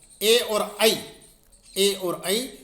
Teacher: ए और ऐ इनका उच्चारण स्थान कंठ और तालु होता है।